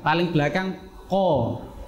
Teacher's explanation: Yang pertama dari pangkal lidah atau lahwiyah, yaitu huruf ko sama huruf k. Kita nanti huruf ko sama k ini tempat keluarnya dari lidah paling belakang.